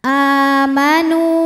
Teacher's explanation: Sebab ada waw sukun yang sebelumnya berharokat dhammah. Cara bacanya adalah nun panjang 2 harokat. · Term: mad tabi'i dhahiri